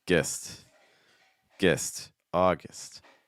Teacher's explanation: Weaken the G and use more of a short I sound. So more gist.